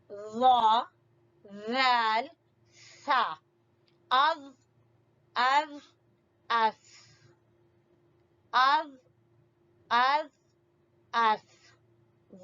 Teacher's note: زبان کی نوک کو سامنے والے بڑے جو 2 دانت ہیں ان کے سرے سے لگائیں گے تو ادا ہوں گے یہ 3 حروف ظا، ذال، ثا.